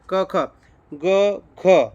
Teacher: ગ બોલો અને ઘ બોલો એમાં શ્વાસનો તમારે કેટલો ખડકાર આવે છે ને હાથમાં એ તમે જોજો એ ઉપરથી મિત્રો એનું પડ્યું છે અલ્પપ્રાણ અને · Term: મહાપ્રાણ